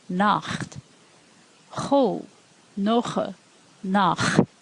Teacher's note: you'll hear ch, as in the German word Nacht. Cho, noche, nach. It's in the back of your throat